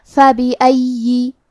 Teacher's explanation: کلمت فَبِأَيِّ میں فا پہ زبر ہے، با کے نیچے زیر ہے اور الف پہ زبر ہے تو ہم یہ تینوں حرکات کو ظاہر کریں گے. آخری میں یا پہ تشدید ہے تو ہمیں 2 حرف کے برابر یا کو پڑھنا ہے اور کیونکہ تشدید زیر کا ہے تو ہم زیر کو ظاہر کریں گے.